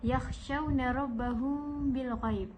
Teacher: Rabbahum bil ghaib iaitu mim sakinah bertemu dengan ba, di mana mim sakinahnya disembunyikan, iaitu tidak terlalu dirapatkan bibirnya. Dan saya tidak terlalu membaca mim, iaitu rabbahum bil ghaib, macam tu. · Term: ikhfa' syafawi